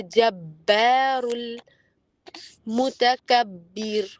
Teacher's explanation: الجبار اور با پر آپ قلقلہ تو نہیں کر رہے لیکن با کی آواز باریک نکالتے ہوئے اچھے سے اپنے ہونٹوں کو اچھے سے علیحدہ کریں. ڈرائی ہونٹ علیحدہ ہوں گے تو قلقلہ اور با کا اپنا جو مخرج ہے وہ بالکل مرج ہو کے نکلتا ہے.